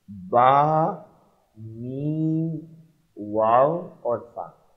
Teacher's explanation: इन हुरूफ को हुरूफ़ शफ़विया इसलिए कहते हैं कि ये होंठों से अदा हो सकते हैं। बा, मीम और फा होंठों को मिलाने के साथ और वाव जो है होंठों को गोल करने के साथ अदा होता है।